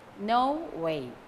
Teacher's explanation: So, no way, both gain stress.